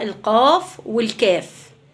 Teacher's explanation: بعد كده بطلع من وسط اللسان، بطلع الشين، الشاء، والجاء. المجموعة اللي بعدها بطلع عندي أقصى اللسان، بطلع القاف والكاف